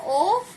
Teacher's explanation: कंठ प्लस ओष्ठ से बोले जाते हैं, तो कंठोष्ठीय वर्ण है